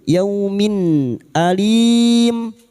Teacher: Kasratan tanwin bertemu hamzah, idhar halqi. Kasr tanwin dibaca dengan jelas tanpa bunyi sengau. · Kasrotan win dibaca jelas tanpa mendengung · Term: idhar halki